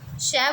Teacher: श बोला जाता है हमारे तालू से